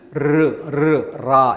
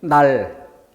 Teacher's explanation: 라 하고 떨릴 때는 뭐예요? 혀가 입천장에 붙었다 떨어졌다를 계속 반복합니다. 라 이렇게 할 때. 그런데 혀가 튼튼하게 딱 붙어 있어요. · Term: 떨림 소리